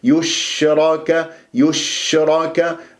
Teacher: والياء مضمومة نظم الشفاه فيها، لكن لا أسحبها إلى الشين، أقول يش، وأنت تريد لك بس حجة أنه بالشين الساكنة على أساس تفشي تريد تقدم الشفاه وتضم الشفاه إلى الأمام، تقول يش خطأ، يشرك يشرك، حتى أصفي الحركات ولا أسحب حركة حرف إلى حرف ساكن.